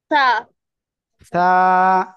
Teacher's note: জিহ্বার আগা, সামনের উপরে দুই দাঁতের আগার সঙ্গে লাগিয়ে উচ্চারণ হবে। হালকা বাতাস বের হবে